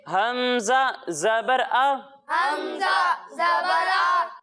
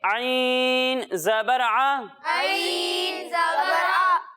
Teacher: जब हम हमजा की अदायगी करेंगे तो इसे हलक के निचले हिस्से से पढ़ेंगे, और जब हम आइन की अदायगी करेंगे तो इसे हलक के दरमियाने हिस्से से पढ़ेंगे